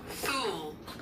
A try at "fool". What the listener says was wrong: Fool. F 발음 알죠? 그냥 풀 이게 아니고 F 발음은 윗입술을 아랫입술로 Fool 이렇게.